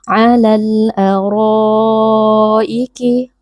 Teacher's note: huruf ra tafkhim karena berharakat fathah dibaca dengan mengangkat pangkal lidah